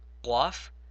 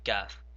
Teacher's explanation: Now the next two letters, people also pronounce these the same, but the first one you have to take from your throat, so qaf, and the next one is simply kaf.